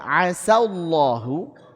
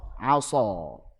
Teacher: huruf sin dia sifatnya istifal, sedangkan shad sifatnya isti'la